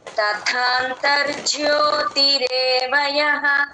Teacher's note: తథాంతర్జ్యోతి అర్ తర్వాత జ వెంటనే తీసుకోవాలి గ్యాప్ ఇస్తే జ కింద జవత్తులాగా అయిపోతుంది